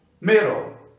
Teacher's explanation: o L passa também a ser uma consoante silábica